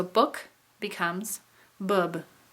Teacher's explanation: This is when a non-labial consonant becomes labial because another labial is in the word. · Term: labial assimilation